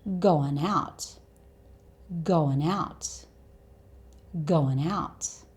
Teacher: when we have a consonant sound at the end of the first word, so n here, and then a vowel sound at the beginning of the second word, so ow, we tend to join these two words to make one long word.